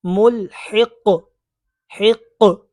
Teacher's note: وقف کی وجہ سے قاف ساکن ہو جائے گا، اور جب حرف قلقلہ ساکن ہو تو ان میں قلقلہ خوب ظاہر کرتے ہیں